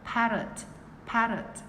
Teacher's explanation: Chữ T bật nhẹ ở răng ạ. Bật nhẹ trên răng.